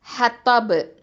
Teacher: Okay, ஹத்தப் கல்கலத்துல் குப்ரா கொடுக்கணும்.